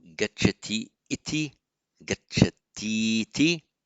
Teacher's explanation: The E plus an E, whether either a long or short, will just merge into a long E.